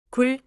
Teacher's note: Don’t say 구르 or 구므. No extra 으 sound after the batchim.